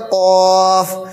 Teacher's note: زبان کی جڑ جب ہم اوپر تالو میں لگائیں گے تو وہاں سے نکلے گا قاف